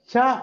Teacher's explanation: చ అన్నప్పుడు గాలిని పూర్తిగా ఆపేశాం. బట్ వదిలేటప్పుడు మాత్రము ఒకటేసారి ఫ అట్లా వదలకుండా చ కొద్దిగా స్లోగా గాలి బయటకు వస్తున్నట్టు, ఒకటేసారి రాదు. సో ఫ్రిక్షన్ ఉంది, స్టాపు ఉంది, ఎందుకని దీన్ని అఫ్రికేట్స్ అంటాం.